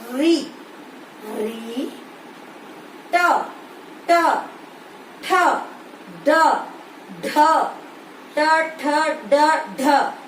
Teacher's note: ये मूर्धा से उत्पन्न होने के कारण इन शब्दों को हम कहते हैं मूर्धन्य